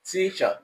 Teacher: the first syllable, which is T, is pronounced with more pressure. This it is higher in pitch than the other syllable, which is ch. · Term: primary stress